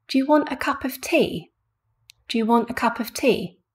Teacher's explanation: so we've got want cup tea very long also louder and at a higher pitch than the other syllables